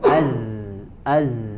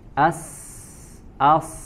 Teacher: dari suaranya saja Az tidak mengeluarkan angin ataupun nafas ya sebaliknya di huruf Sin ataupun Shad maka dia memiliki sifat hams di mana mengeluarkan angin ya Selain tentunya mengeluarkan atau mengalirkan eh suara as as ya